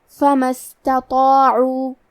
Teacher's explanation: کلمت استطاعوا کی شروعات میں الف ہے، کیونکہ یہ حمزۃ وصل ہے، تو ہم حمزہ کو ظاہر نہیں کریں گے۔ کلمت فما کے بعد حرف السین کو پڑھیں گے، فما استطاعوا۔